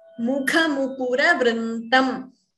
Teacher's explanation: Mukha. Kha is Mahaprana here. Next ka is Alpaprana. So please be careful not to interchange.